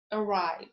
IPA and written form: əˈraɪv (arrive)